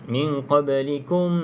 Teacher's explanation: kalau kita sambung kita kena dengung dua harakat minqikum tapi kalau kita nak berhenti jadi tak perlu dengung mati